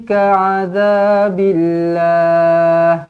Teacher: lafzul jalalah di sini kita kena baca dengan nipis kerana huruf sebelumnya berbaris bawah. Billah bukan billah.